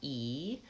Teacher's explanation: the E vowel is, my tongue is very high in front